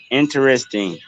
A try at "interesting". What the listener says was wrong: you gotta make that T pop.